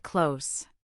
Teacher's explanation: The th in clothes is silent, it sounds like close.